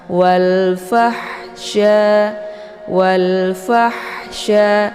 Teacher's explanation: ha kecil atau biasa dikenal dengan ha pedas jadi cara bacanya fa-nya dibunyikan secara Hamas yaitu ada desis angin yang agak samar-samar walfahsya walfahsya jadi ada Hnya ya ada bunyi ha gitu jadi